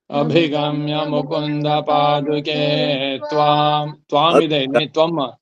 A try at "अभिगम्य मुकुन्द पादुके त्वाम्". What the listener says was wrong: ಇಲ್ಲ ಇಲ್ಲ ಇಲ್ಲಿ ಕರೆಕ್ಟ್ ಎಲ್ಲಿ ತ್ವಮ್ ಅಲ್ಲಿ ಇಲ್ಲಿ ತ್ವಾಂ ಹೇಳ್ಬೇಕಾದ್ರೆ ಅಭಿಗಮ್ಯ ಮುಕುಂದ ಪಾದುಕೆ ತ್ವಾಂ